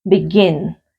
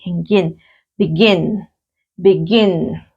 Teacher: Begin. Entonces tiene la entonación, la mayor fuerza de voz, sí, también en la última sílaba